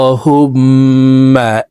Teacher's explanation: এখানে আল্লাহ এইলামকে ল বলে অর্থাৎ মোটা করে পড়তে হবে